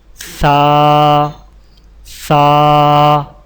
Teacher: زبان کی نوک کو سامنے والے اوپر کے 2 دانتوں کے اندرونی کناروں سے نرمی سے لگا کر باریک آواز میں پڑھیں